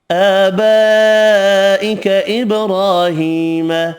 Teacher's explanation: آبائک ابراہیم، کھڑا زبر کھڑی زیر 1 الف کی مقدار میں کھینچ کر پڑھیں گے، بڑی مد 5 الف کی مقدار میں کھینچ کر پڑھنی ہے، با ساکن پر قلقلہ کریں گے، را پر بھی پڑھیں گے۔